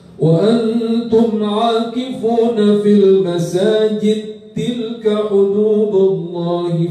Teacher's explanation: As-Susi ini Masjid As-Susi ya tak itu ayat 187 ya al-masajid ya al-masajid As-Susi itu kan kabir bacanya ولا تباشروهن وأنتم عاكفون في المساجد وقف betul. Cuma kalau wasal maka dal kepada ta diidghamkan bagi As-Susi